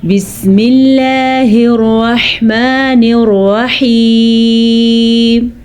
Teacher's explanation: آپ نے دھیان دیا میں نے اللہ کا نام باریک پڑھا ہے، کیونکہ اللہ کے نام سے پہلے زیر ہے تو اللہ کا نام باریک پڑھا جائے گا، اور الرحمن الرحیم دونوں را کو پر پڑھنا ہے